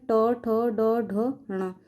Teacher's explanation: ट वर्ग का उच्चारण स्थान मुर्धा